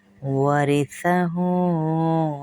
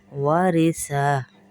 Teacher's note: یہ جو را ہے اس کو باریک پڑھیں گے، موٹا نہیں کیونکہ زیر ہے نیچے